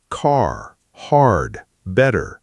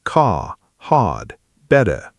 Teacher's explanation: In most British accents, especially standard British English, or what's called received pronunciation, the R at the end of a word or before a consonant is often silent or very soft.